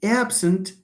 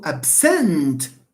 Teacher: when it occurs as a verb, stress falls on the second syllable